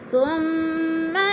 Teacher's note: ثم کی میم مشدد ہے، غنہ کریں گے، سختی سے جما کر پڑھیں گے